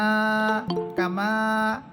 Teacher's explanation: এরপর কাফ সবর কা, মিম আলিফ সবর মা, কামা। এখানে মিম হরফে জবরের পর খালি আলিফ আছে, এক আলিফ পরিমাণ টেনে পড়তে হবে। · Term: এক আলিফ টান